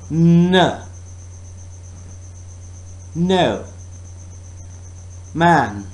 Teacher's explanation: And it is not touching the softer part, but it is touching the harder part, hard palate. Oral passage is blocked by pressing tongue tip against the alveolar ridge.